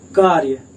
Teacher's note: रा के तुरंत बाद या आ रहा है, मतलब रा बहुत थोड़ी देर के लिए, कार्य रा बहुत थोड़ी देर के लिए आ रहा है, तो यहाँ पे जो है आपका या से पहले आ रहा है रा उच्चारण, देखिए कार्य।